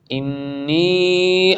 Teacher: انی نون مشددہ ادغام میں اور غنہ بھی